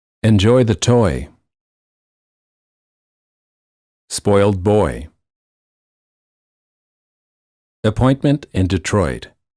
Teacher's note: the tongue is relaxed moving from a mid High position to a high position